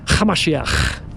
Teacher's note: So if we were to be transported, we went back in time 2,000 years, you would hear his followers call them Yeshua Hamashiach, with a ch sound. You have to add a little bit of a throaty little ch.